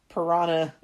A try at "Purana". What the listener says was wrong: Isn't it just piranha? You're saying piranha like a fish.